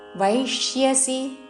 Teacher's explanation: వ ఐత్వముతో దాని మీద ఆఘాత